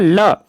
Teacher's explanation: जिन व्यंजनों के उच्चारण में जीभ तालु को छुए किंतु बगल पार्श्व से हवा निकल जाए, उन्हें पार्श्विक व्यंजन कहते हैं। हिंदी में केवल ल एक व्यंजन पार्श्विक है।